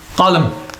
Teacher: if you stop at the word, it's pronounced with a sukoon and it becomes qalam